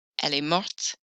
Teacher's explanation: Mourir, you will hear the ending because of that T consonant.